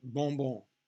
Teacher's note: n or an m that's exactly what you want to do we want to eliminate the sound of the in or m on its own it needs to be part of that vowel nasal vowel sound